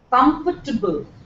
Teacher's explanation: there is no table it's only there in the spelling it's not there in the pronunciation